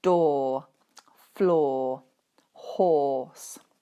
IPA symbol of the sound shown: ɔ: